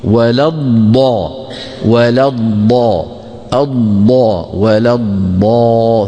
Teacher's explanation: نمد الضا كما ذكرت منذ قليل بمقدار يا موسى او بمقدار نوحيها يعني بمقدار ست حركات · ضاد ساكنه مدغمه في ضاد ايه مفتوحه